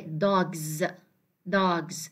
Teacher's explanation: the plural S here, is pronounced as Z